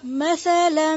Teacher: ثا نرمی سے، جس طرح سے ذال اسی طرح سے ثا، اس میں سین کی آواز نہیں آنی چاہیے